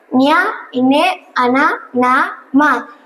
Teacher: ఇవి ముక్కు సహాయంతో పలుకబడతాయి కనుక వీటిని అనునాసికాలు అని అంటారు.